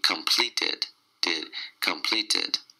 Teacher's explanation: Change T to the soft D